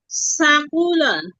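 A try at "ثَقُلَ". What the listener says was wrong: সাকুলা এভাবে বললে কিন্তু টান শোনা যায়, হ্যাঁ। সাকুলা।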